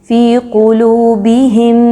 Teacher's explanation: میم کو میم سے ملاتے ہوئے کچھ دیر رکنا ہے۔ فی قلوبہم، یہ جو آواز آئی اس کو غنہ کہتے ہیں۔